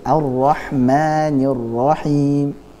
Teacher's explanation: ma-nya jangan terlalu panjang, 2 harokat saja